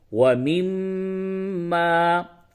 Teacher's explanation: जिस मीम पे तशदीद हो उस मीम को गुनने के साथ पढ़ते हैं। यानी उसकी आवाज को नाक में ले जाकर के कुछ देर के लिए रोक के गुनगुनाते हैं। इसे गुना कहते हैं।